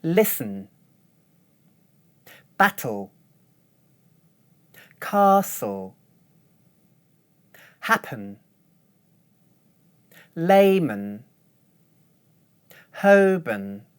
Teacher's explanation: I don't make a full vowel sound for the weak syllables